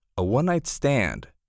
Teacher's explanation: The O in one has a W sound.